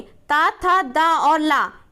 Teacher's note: ता, था, दा और ला इनका उच्चारण हम कहाँ से करते हैं? दंत से करते हैं।